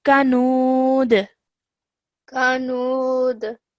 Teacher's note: when you end the verse, you have to end the sound with a jerk sound